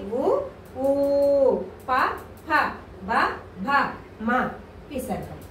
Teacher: ఏంటి అంటే ఉ ఊ ప ఫ బ భ మ విసర్గ వీటిని ఏమంటారంటే పెదవుల ద్వారా పుట్టుకొస్తాయి కాబట్టి పెదాల కలయిక వల్ల పుట్టుకొస్తాయి కాబట్టి వీటిని ఓష్యములు అని చెప్పేసి అంటారు